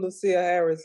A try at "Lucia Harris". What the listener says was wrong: Lucy. spelled Lucia, but it's pronounced Lucy.